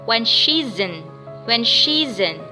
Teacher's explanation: Connect it, connect S with the vowel I after S.